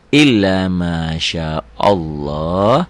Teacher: Jadi lafad Allah itu berbunyi tebel, tafkhim, ya taglid. Kalau sebelumnya berbaris fathah atau domah, baris di atas.